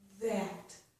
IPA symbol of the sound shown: ð